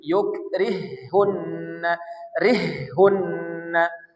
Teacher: Maka H pertama dimasukkan ke H kedua dikasih tasdid. Jadi yukrihunna rihunna 1 2 3. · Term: idgham